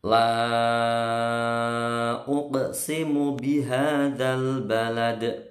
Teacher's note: La, ini panjang bukan le tapi la. Panjangnya 5 ketukan. La panjang ini ketemu alif, berarti dihukumi mat jaiz munfasil.